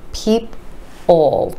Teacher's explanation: And what's happening is there's a short E, E sound sneaking in right before the dark L